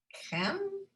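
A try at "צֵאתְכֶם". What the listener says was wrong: Zait chem. Zait. You have to get the tzadi and the tav in. Zait chem.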